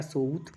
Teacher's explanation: मध्यवर्ती व अवधि की भांति ऊ के रूप में उच्चरित होता है